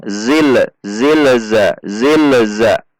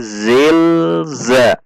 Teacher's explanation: jadi tidak ada hentakan pada lam sukun